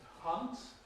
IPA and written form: hʌnt (hunt)